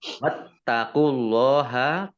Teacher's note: Kumnya dibaca pendek, ya, tidak ada tanda panjangnya. Wattaqullaha, taknya dibaca double, ada tasdidnya.